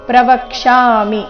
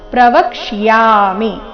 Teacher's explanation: ಅರ್ಧಕ್ಷ ಪೂರ್ತಿಯ ಯ ಚೆನ್ನಾಗಿ ಕೇಳಿಸಬೇಕು